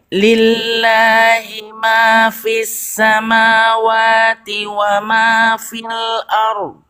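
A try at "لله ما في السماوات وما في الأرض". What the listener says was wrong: Panjangin lagi istiqomahnya. Lillahi ma fis samawati wa ma fil ard. Fil ard. Gitu.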